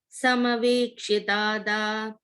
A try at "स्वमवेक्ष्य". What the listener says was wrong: Sevakamapi Swam, not Sabam. Swamavekshya Dhata.